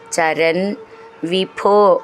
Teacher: ഭ എന്നുള്ള അക്ഷരം നന്നായിട്ട് ഊന്നി പറയാനുള്ളതാണ്